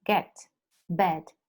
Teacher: Open mid, front unrounded vowel.